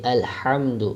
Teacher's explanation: یہ حا حلق کے درمیان والے حصے سے، حروف حلقی میں سے ہے، تو یہاں حلق کے درمیان والے حصے سے ادا ہوگا۔